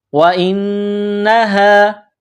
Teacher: واو کو پڑھتے وقت ہونٹوں کو گول کرنا ہے، حمزہ کو نون کے ساتھ ملانا ہے، نون میں غنہ کرنا ہے، آواز ناک میں چھپانی ہے. یہ گول ہا ہے چشمے والی، صرف منہ سے ہوا نکالنے کی طرح اس کو پڑھا جاتا ہے.